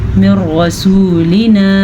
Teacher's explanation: نون ساکن کے بعد را ہے تو ہم نے یہاں پہ را پہ غنہ نہیں کرنا, ٹھہرنا نہیں ہے, نون کی حیثیت کو ختم کر دیا ہے. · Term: بلا غنہ